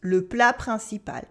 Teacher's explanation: We have a silent T in plat, a nasal sound in principal